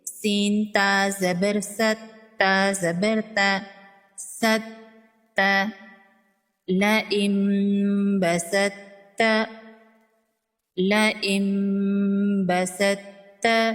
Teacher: یہاں پر طا کو چھوڑ کر سین کو ڈائریکٹ تا کے ساتھ ملائیں گے۔